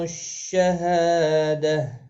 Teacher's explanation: ہا الف مدہ ہے، ایک الف کی مقدار کے برابر کھینچ کر پڑھیں گے